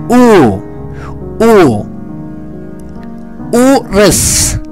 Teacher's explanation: Türkçedeki u sesine benzer bir ses veriyor Ancak biraz daha uzatıyoruz uzun